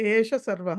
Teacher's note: ఏషః సర్వః అని ఉంది పైన శ్లోకంలో ఏష సర్వః అని ఉంది అది ఏషః సర్వః కాబట్టి విసర్గ యొక్క లోపం జరిగింది